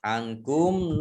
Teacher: nun sukun bertemu dengan huruf kaf bacaan ikhfa dibaca samar-samar